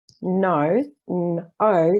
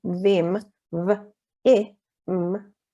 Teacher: So for example, in the word November, no, n, o, the o is long, but in the second syllable, vem, v, e, m, the e is short